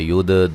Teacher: من الکتاب، تا مد اصلی ہے. ید، دال پہ قلقلہ کرنا ہے